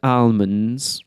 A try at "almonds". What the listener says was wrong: Almonds. Oh, pronouncing every letter.